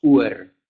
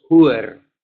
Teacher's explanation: El H es como un sonido de viento, pero no con mucha voz. Pero no es silencio, no es que decimos Uer, no es que decimos Uer, decimos Huer.